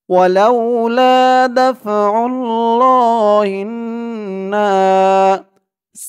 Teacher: হা দিয়ে এই তাসদিদ ওলা নুন ধরবে হা নুন জের হিন ওয়াজিব গুন্না হবে জের হরকতের পরে নুনের উপরে তাসদিদ হা নুন জের হিন নুন আলিফ জবর না না এক আলিফ